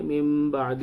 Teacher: تولیتم من بعد، اور یہاں پر بھی غنہ کریں گے، من بعد، نون ساکن کے بعد با آ رہا ہے تو نون کی آواز کو میم سے بدل کر پڑھیں گے